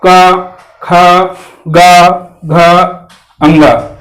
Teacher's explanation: जब बोलिएगा आप इसको का खा गा घा अंगा, तो सारी चीजें कंठ से निकल रही हैं